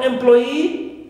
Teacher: Also for employee, right, we stress ploy, clear, second syllable, and not e, which is normally, right, that suffix, all right, but here in this case it's an exception. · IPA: /ɪm'plɔɪ ɪː/